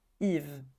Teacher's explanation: on prononce pas le S à la fin